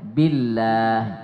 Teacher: kalau sebelum lamul jalalah tuh berbaris di bawah dibaca tipis tarkik